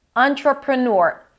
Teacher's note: Entrepreneur, two schwa sounds. The TR together turns into a ch sound